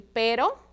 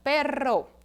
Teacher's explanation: Que, ó, quando tá na forma única, eu pronuncio pero, certo? Quando ela tá aí na forma doble, eu pronuncio forte e vibrante, ó, perro, certo?